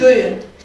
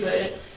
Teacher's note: Verilmiş bayatın nümunəsinə diqqətinizi cəlb edərək qeyd etmək istəyirəm ki, böyün sözü hal-hazırda ədəbi dilimizdə bu gün şəklində işlənib. Amma Amasya rayon camaatı ortada bu gün əvəzinə böyün dedikdə bir samit düşümü hadisəsi yaşanır.